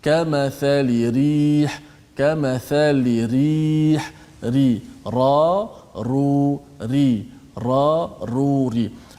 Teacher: Dia ada getaran menyebabkan kadang-kadang kita tak terasa sentuh ke langit, sebenarnya sentuh ra. Tapi dia ada getaran kan, maka dia tak sentuh sekuat seperti lam dan nun. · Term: sifat takrir, Sifat takrir